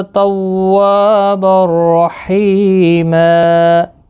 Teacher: تنوین کے بعد یرملون کا را آیا ہے، ادغام ہوگا لیکن گنہ نہیں ہوگا